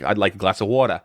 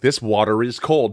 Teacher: I just said the R because the next word was is.